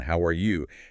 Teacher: with a generally friendly tone and typically a slight rising intonation at the very end